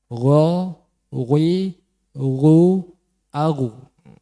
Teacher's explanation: Itu huruf ghin ya. Jadi ghin niku ada sifat tafhim atau huruf isti'la yang harus dengan memoncongkan bibir.